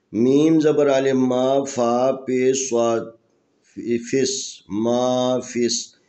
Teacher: صاد بھی حروف استعلاء میں سے، ان حروف میں سے جن کو موٹا پڑھا جاتا ہے۔ میم زبر الف ما، فا پیش صاد فس، ما فس، یہاں فا کو ملانا ہے اس صاد کے ساتھ۔